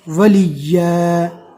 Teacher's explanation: دو زبر رکنے کی حالت میں الف مدہ بن جائے گا